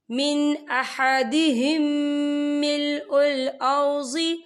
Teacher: میم ساکن کے بعد جو ہے میم مشدد والا حروف آ رہا ہے تو یہاں پر ادغام شفی ہوگا، ہم پچھلے میم کو اگلے میم میں مدغم کریں گے اور ہم یہاں غنہ بھی کریں گے۔